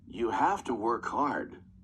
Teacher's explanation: You have to work hard. Not stressed. So we have the weak form.